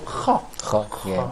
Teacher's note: So both of them have the same place of articulation, which is uvular. So I can say confidently that is ha is a voiceless, and also it's produced by the uvular part of.